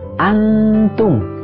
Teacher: Antum nun sukun bertemu dengan tak hukumnya adalah ikhfa artinya Hai dibacanya dengan dengung ditahan dulu dua harokat